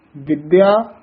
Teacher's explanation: ਇਸਨੂੰ ਕਸ ਕੇ ਬੋਲਣਾ ਹੈ ਵਿਦਿਆ ਨਹੀਂ ਕਹਿ ਦੇਣਾ